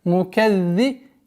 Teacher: Удвоение, не забывайте межзубное произношение да